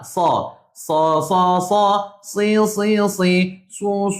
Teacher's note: Su kena muncung sebab pada depan.